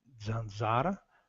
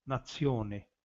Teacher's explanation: A letra Z representa uma consoante alveolar e africada, tanto o som de Z, zanzara, pernilongo, tanto o som de tse, nazione, né, nação, dependendo do contexto, embora também haja variantes com alofonia.